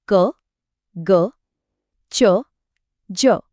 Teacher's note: एकदम साफ आवाज है। कोई अतिरिक्त हवा या ह नहीं है। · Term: अल्पप्राण